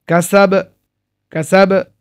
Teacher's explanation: কোন টান নেই কলকলা হবে